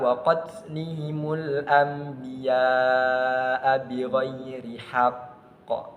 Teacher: dibaca memantul dengan menyelesaikan tasydidnya, menyempurnakan tasydidnya terlebih dahulu, kemudian dibaca secara memantul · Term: qalqalah akbar